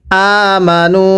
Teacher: এই নুনের মধ্যে 3 আলিফ টান দিব। মুদ্রা হরফ ওয়াওয়ের উপরে চিকন চিহ্ন, এরপরে লম্বা হামজা থাকলে 3 আলিফ টানতে হয়।